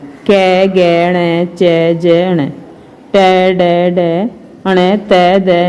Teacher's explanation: अल्पप्राण, इनके उच्चारण में श्वास वायु कम मात्रा में बाहर आती है